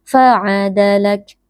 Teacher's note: huruf kaf sukun kita keluarkan sedikit nafas sama seperti huruf ta sukun tapi tidak boleh berlebihan